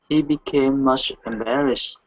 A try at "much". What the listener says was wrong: Give me a good CH sound here. Instead of mush, it's ch, much.